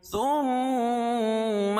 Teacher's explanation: میم مشدد میں غنہ ہوگا